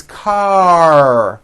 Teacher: it's car your tongue has to pull back car and also your lips close a little bit in the front the r needs to be very strong and you need to close the word car let's practice these